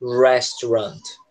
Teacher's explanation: É como se a sílaba forte ela é o rest